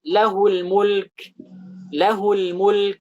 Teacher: Ini kan asalnya lahu al-mulk. Tapi ketika bertemu dengan kata setelahnya lahul mulk, cuma 1 harakat doang.